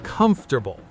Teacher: Stress on the first syllable, and notice how the middle kind of disappears in fast, natural speech.